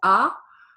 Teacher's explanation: sound like an A sound in French which is ah but coming through the nose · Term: nasal sounds